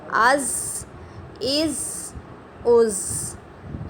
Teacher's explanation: زبان کو ثناء علیہ اور ثناء سفلیٰ کے درمیان میں اس کے ساتھ ٹچ کریں گے تو زا کا مخرج ادا ہوگا · زا کا جو مخرج ہے وہ سختی سے ادا ہونے والا ہے